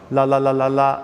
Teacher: at the front of the tongue, the tip of the tongue for light L's like la and notice how it uses the same consonant but two different sounds.